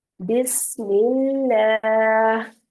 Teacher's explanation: اب لفظ اللہ کے لام سے پہلے زیر ہے تو اب لام کو باریک پڑھیں گے